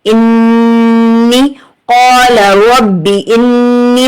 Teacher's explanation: نون کے اوپر تشدید ہے، یہ نون مشدد ہے، یہاں پر غنہ کریں گے، 2 سیکنڈ غنہ کیا جائے گا، غنہ زمانی ہوگا۔